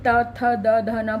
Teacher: दांतों के पीछे की तरफ जीभ उसे टच करती है